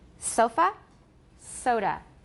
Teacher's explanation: SCH so we got it from Hebrew third through German and it's called a schwa and unstressed vowel and reduced and it occurs at the ends of words